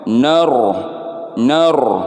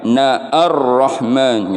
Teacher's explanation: Harusnya dia di wasol itu alifnya ini tidak dibaca, lamnya juga tidak dibaca, langsung masuk ke huruf ro bertasdid